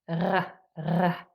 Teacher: And then last but not least, number 3 was the capital R sound symbol, and that was the German R that is formed at the back of your throat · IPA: /ʀ/